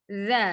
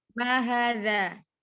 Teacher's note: Ujung lidahnya menempel pada ujung gigi seri atas. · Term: zal